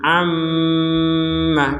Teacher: Ada mim bertasydid, kedudukannya sama dengan nun bertasydid. Jadi sama-sama dibaca dengan dengungan.